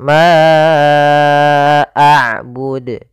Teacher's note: terjadi sebagaimana tadiah yaitu adanya Hamzah yang datang setelah huruf mad kita panjangkan untuk huruf Ma panjangnya empat harakat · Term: Mad Jaiz munfasil